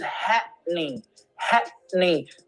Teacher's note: And the pronunciation is happening, happening. There is a pause. There's a glottal pause.